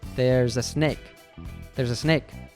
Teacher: exclamation almost sounds like just one word. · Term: connected speech